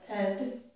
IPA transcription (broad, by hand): əd